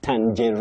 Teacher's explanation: You say tan, then je, then reen with a stress.